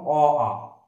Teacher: অ আ তোমরা দেখো মুখটা গোল হয়ে মানে বর্তুল হয়ে যাচ্ছে, আর সরাসরি কণ্ঠ থেকে এই অ আ গুলো বেরিয়ে আসছে, এই জন্য এগুলোকে আমরা বলবো কণ্ঠস্বর।